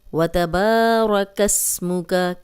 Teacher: اس کو فوراً ادا کریں گے، با کو لمبا کریں گے، را کو موٹا رکھیں گے، را پہ زبر ہے، جب بھی را پہ زبر یا پیش ہو تو را موٹی پڑی جاتی ہے